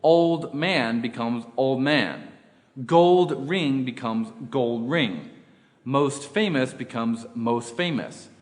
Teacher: whenever t or d comes between two consonants they get deleted